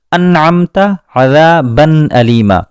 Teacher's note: نون کی آواز بالکل صاف ہے، اس کی اصلی آواز کو ہم سن سکتے ہیں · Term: اظہار